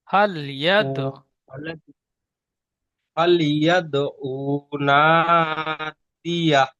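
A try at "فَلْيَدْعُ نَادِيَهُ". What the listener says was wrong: না, আইন পেশ উ টান হয় না, তো নুনটি টান দিয়ে পড়বেন। আইনটি টান হয়ে গিয়েছে, বিনা টানে পড়বেন। ফালিয়া দৌনা দিয়া।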